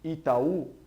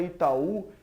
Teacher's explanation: na palavra Itaú a gente vê que é última sílaba que tá acentuada